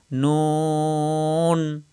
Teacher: জিহ্বার আগা উপরের তালুর সঙ্গে লাগাইয়া নুন স্বাভাবিক উচ্চারণ